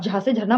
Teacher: जब आप झा से झरना बोलेंगे तो इसको बोलने में आप तालू का यूज कर रहे हैं ना तो ये भी तालव्य ध्वनियों के अंतर्गत आता है ठीक है